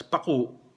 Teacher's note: So ang bigkas, paku, mabilis yung first syllable, hindi long vowel, pero meron pa ring glottal stops yung U, yung last syllable.